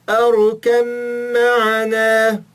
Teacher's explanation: Vejam que o Bé não aparece.